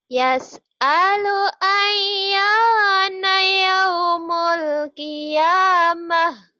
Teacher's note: jangan ya-nya jangan panjang